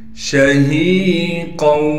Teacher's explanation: شین میں تفشی یعنی شین کی آواز کو صاف کر کے نکالنا ہے۔ ہا کے بعد یا مدہ ہونے کی وجہ سے ہا کو ایک الف کی مقدار کھینچیں گے۔